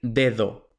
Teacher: un nativo va a decir dedo, con la primera D fuerte y la segunda D suave